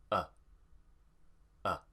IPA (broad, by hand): ə